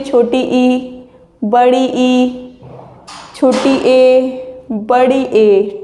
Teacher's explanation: अग्र स्वर होते क्या हैं, जो जीव के अगले हिस्से वाले भाग से जो स्वर बोले जाते हैं। जैसे समझिए छोटी ई, तो आप बोलेंगे तो छोटी ई, ऐसा लगेगा जैसे आप आगे वाले भाग से बोल रहे हो।